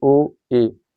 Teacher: जिनको बोलने पे हल्का सा मुंह खुले, वो क्या कहलाएंगे तुम्हारे अर्धवृत स्वर कहलाएंगे